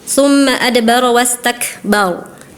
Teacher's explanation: Harusnya dibaca tebal karena ra sukun atau waqaf sebelumnya berharokat fathah ya